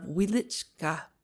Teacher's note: you must pronounce it with the accent on the second syllable